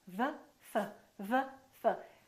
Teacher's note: the position of the lips is the same except one is voiced and one is voiceless